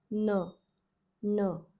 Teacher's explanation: Tip of the tongue is again touching the palate, and then this N sound is pronounced, non-aspirated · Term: Palate N